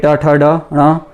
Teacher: ट वर्ग के ट, ठ, ड, ण ये मूर्धा का स्पर्श करते हैं